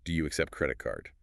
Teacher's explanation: Always pay attention to the gentle upward intonation on questions